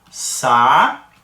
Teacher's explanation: Nessa pronúncia, observa que o AN é o que eu uso mais força. Então, esse AN aqui é que é a vogal. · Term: tritongo